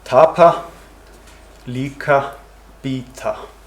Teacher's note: post aspirated p k and t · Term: post aspiration